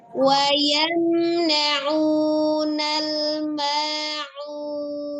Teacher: Jadi ketika membaca ma'un, posisi nun sukunnya kembali ke makhraj huruf nun. Jangan membaca nun sukun pada saat posisi masih memulungkan bibir ketika dhamma di huruf ain ya.